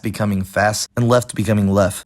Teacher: I could see non-Black Americans adopting this feature of simplifying word-final consonant clusters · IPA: [fæst̚]